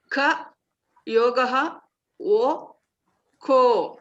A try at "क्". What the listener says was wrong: You are saying ka. You should say k.